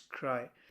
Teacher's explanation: there's a variation it starts with a and it blends into I and ends in I itself